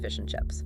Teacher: The D sound in and just disappears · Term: elision